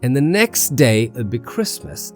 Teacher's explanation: That falling intonation signals that the thought is complete. It's the end of an idea. · The voice rises slightly on the next day and falls gently on Christmas.